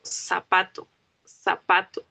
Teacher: En el idioma castellano hablado en Latinoamérica, nosotros usamos la S y la Z en su función fonética, es decir, los sonidos, de forma muy parecida.